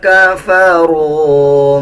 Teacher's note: را کو واو کے ساتھ ملا کے پڑھا جائے گا اور 1 سیکنڈ لمبا کر کے پڑھیں گے۔ جب واو کے اوپر جزم آ رہا ہو اس سے پہلے والے الفاظ کے اوپر پیش آ رہا ہو، اب جیسے یہ را کے اوپر پیش ہے تو اس کو ہم 1 سیکنڈ لمبا کر کے پڑھیں گے۔